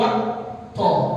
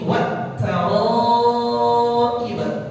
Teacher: dibaca 4 harokat karena mad wajib muttasil